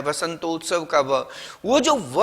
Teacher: व का दंतोष्ठम, य र ल व में जो आपने व पढ़ा है वसंतोत्सव का व, वो जो व है उसका उच्चारण स्थान है दंतोष्ठ।